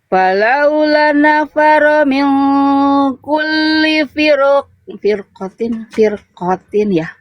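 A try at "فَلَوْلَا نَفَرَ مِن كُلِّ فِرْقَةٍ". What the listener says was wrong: La-nya berapa harokat Bunda la-nya? La-nya 2 harokat ya, jangan cuma 1. Ada fathah ketemu alif di sini di huruf lamnya.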